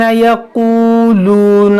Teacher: ये वाव मद्दा है, ये वाव साकिन से पहले पेश है, ये भी वाव मद्दा है, दोनों को खींचेंगे एक अलिफ के बराबर